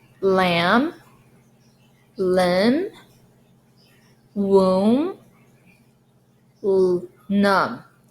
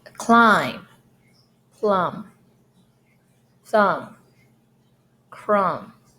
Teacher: So when it ends with MB, it's the silent B. It's just you only have the M sound.